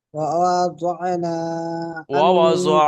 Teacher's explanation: এই ওয়াওটা টান হবে না, দুটো সব হারাকাত আছে, দুটো সব তাড়াতাড়ি পড়তে হবে।